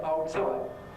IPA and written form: ˈɒo ˈtsɒɪʔ (Hold tight)